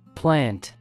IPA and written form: plænt (plant)